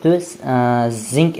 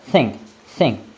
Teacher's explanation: d tilingizni ikkita tishingizni orasidan chiqarasizda tomogingizdan the deb talaffuz qilasiz bu payt o'zida tilingiz orqaga qaytib ketishligi kerak bo'ladi. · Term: th sound